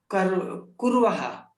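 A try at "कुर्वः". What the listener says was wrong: Samyak.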